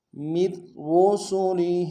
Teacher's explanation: پہلے را کو باریک ادا کریں گے، اگلے را کو موٹا ادا کریں گے